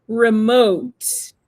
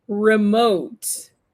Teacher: So, vous avez le stress, l'accent tonique sur la seconde syllabe, d'accord? Donc, c'est pas remote, c'est pas remote, c'est remote, ok?